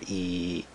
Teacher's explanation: if you have two of them in a row, the sound is still E. It's just longer E.